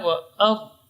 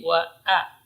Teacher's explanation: Jadi a tidak boleh tebal. Tidak boleh dibaca wa ar, tapi wa a.